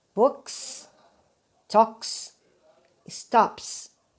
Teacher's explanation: Você percebe que esse som é um som seco, né? Nós chamamos isso de unvoiced, porque ele é bem sequinho mesmo.